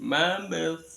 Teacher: Sa itu tempatnya di ujung lidah, angin disaring antara lidah sama 2 gigi.